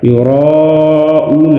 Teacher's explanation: مد متصل کو 4 الف کے برابر کھینچ کر پڑھیں گے